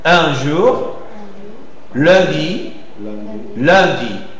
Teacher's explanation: Imaginez la prononciation nasale avec le lèvre arrondi. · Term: voyelle nasale